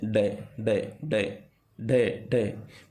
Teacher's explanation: जिह्वा की नोक झटके से नीचे गिरती है, ठीक है, जैसे डे, डे, डे, डे, डे, मतलब ऊपर जैसे ही टच करती है तुरंत नीचे गिरती है, ठीक है। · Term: उत्क्षिप्त